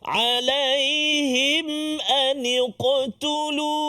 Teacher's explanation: Alaihim mim mati bertemu dengan hamzah, iaitulah izhar syafawi. Izhar syafawi, maka kita kena jelaskan bacaan kita, tak boleh dengung.